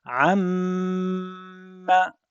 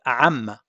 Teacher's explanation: The first time you hold your lips together for at least 2 seconds, then you release it. So this way you have the meme pronounced with the appropriate stress on it. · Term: shadda